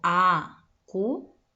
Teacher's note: ¿Dónde encuentro la mayor fuerza de voz? En la última sílaba, ¿verdad? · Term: sílaba tónica